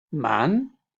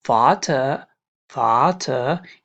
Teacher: here we have a word man here it is shortly pronounced and here in this word for example father father it is a bit longer pronounced